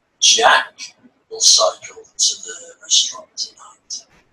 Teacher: You can hear that the word Jack has more melody, plus it also has a pause after the word, meaning, did you hear that important piece of information I just said?